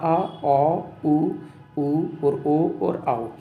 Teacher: इनका उच्चारण जीभ के पिछले हिस्से से होता है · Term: पश्च भाग